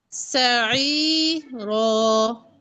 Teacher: سعيرا را تو پر ہوگا نا، آپ نے باریک کو باریک کرنا ہے، پر کو پر. یہاں پہ صرف را پر ہے